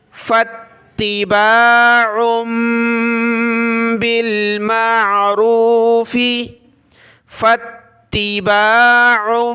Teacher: عین کو چھوٹی میم کے ساتھ ملایا، ناک میں آواز پیدا کی